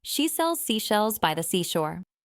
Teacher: Feel where your tongue is for each one. For the s, the tip of your tongue is near the back of your top teeth. For the sh, your tongue is a bit further back. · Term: the sh sound